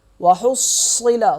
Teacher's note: صاد ہوگا موٹا اور سختی کے ساتھ ہا کے ساتھ مل جائے گا